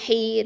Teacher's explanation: ஹ கெஸ்ரா யாவுல் மத்து ஹை, 2 ஹரக்கத்தை நீட்டுறோம்